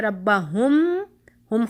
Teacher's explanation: میم ساکنہ کے فوراً بعد اگر حرف با آ گیا تو پھر ہم میم کو غنہ کے ساتھ چھپائیں گے، غنہ کرتے ہوئے میم کو چھپائیں گے، اور اس کو اخفاء شفویہ کہا جاتا ہے۔